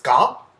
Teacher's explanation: two linked versions of the alveolar fricative and the uvular plosive, which would be ska